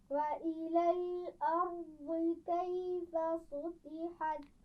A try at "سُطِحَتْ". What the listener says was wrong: سین کو موٹا نہیں کرنا. سُطِحَتْ.